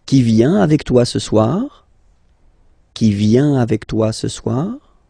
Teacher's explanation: remember that you will have to raise your voice a little bit at the end of the question